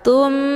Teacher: Cara bacanya, huruf tha-nya dileburkan ke dalam huruf mim dengan cara ditekan kemudian ditahan lebih kurang 2 kali ketukan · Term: ghunnah musyaddadah